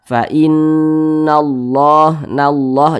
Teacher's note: Ada lafaz Allah sebelumnya ada huruf yang memiliki tanda baca fathah, maka lafaz Allah dibaca tebal sehingga dibaca fa innallah, nallah, jangan dibaca fa innallah, jangan, tapi dibaca fa innallah, begitu.